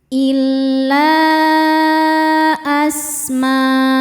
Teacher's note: Maka mimnya panjang boleh empat boleh lima harakat. · menghadapi huruf sin. Cara bacanya tanwin dibunyikan samar-samar menuju sin disertai dengung. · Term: mad wajib muttasil, ikhfa hakiki ausat